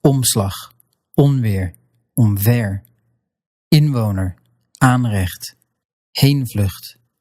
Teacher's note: you let the vowel get nasal as if you're about to pronounce that n or m at the end, but you don't actually pronounce the nasal consonant. You're going to skip over to the next one.